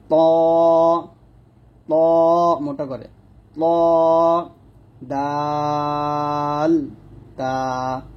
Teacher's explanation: জিহ্বার আগা সামনের উপরে দুই দাঁতের গোড়ার সঙ্গে লাগিয়ে উচ্চারিত হয়। অর্থাৎ জিহ্বার আগা সামনের উপরে দুই দাঁতের গোড়ার সঙ্গে লাগবে, তার মধ্যে ত মোটা হবে আর দাল তা পাতলা হবে।